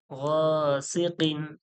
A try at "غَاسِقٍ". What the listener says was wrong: এখানে দোজের থাকবে এখানেও ছেড়ে গিয়েছে